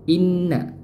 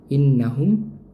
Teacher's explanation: Inna ditahan, didengungkan. Nun bertasydid.